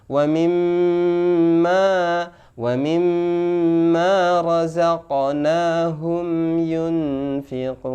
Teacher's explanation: Alladzina yu'minuna bil ghaibi wa yuqimunas shalah wa mimma razaqnahum yunfiqun. Wa mimma, mim tasjid adalah bacaan gunnah, dengung disempurnakan, tidak sebatas wa mimma.